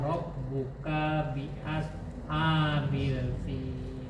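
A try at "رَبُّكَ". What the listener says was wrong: Kaknya juga pendek. Rob buka, enggak rob buka bi as, langsung. Rob buka bi ashabil fil.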